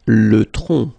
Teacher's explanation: final C is not pronounced here